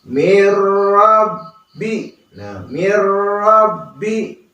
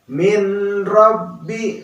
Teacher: hukumnya idgham bilagunnah tanpa ada dengungnya